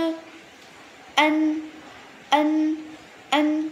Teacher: vận mẫu E N các bạn đọc là ân đọc trong cổ họng nhá